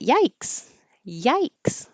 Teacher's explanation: this vowel is I um I represented it with AI y because when you finish your tongue is going back up into the High y i position